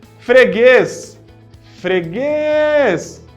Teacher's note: Opa, é oxítona, a última é forte.